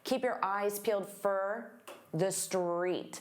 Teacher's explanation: Keep your eyes peeled, peeled. And for also becomes very unstressed, fur. Keep your eyes peeled for the street.